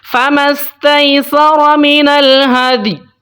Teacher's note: یہاں پر ہم نے وقف کرنا ہے فَمَسْتَيْسَرَ مِنَ الْهَدْيِ، ٹھیک ہے، یا کو آپ نے اتنا ہلکا سا پڑھنا ہے کہ یا کے اوپر قلقلہ بھی نہ ہو